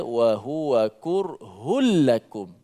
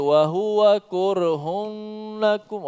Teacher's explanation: Tak ada lagi dengung. Kerana dimasukkan secara total makhraj huruf nun dan tanpa digunnahkan. · Suara nun dimasukkan ke dalam huruf lam, maka jadilah dia wa huwa kurhul lakum.